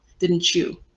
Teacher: the t and the y end up becoming a ch sound right didn't chew so it sounds like you're talking about chew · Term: palatalization